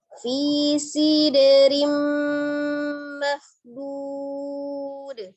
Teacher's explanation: dilebur ke dalam mim tasdidnya dan disertai dengan gunnah. Rim ditahan ya. · Mahbud, ada huruf kha dari tenggorokan bagian atas tebalkan, kemudian huruf dhad juga tebal dipanjangkan menjadi mad alif disukun, dalnya disukunkan di akhir, maka dia memiliki sifat qalqalah, dipantulkan. Ketika dia di akhir maka dia qalqalahnya adalah kubro. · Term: idgham bi gunnah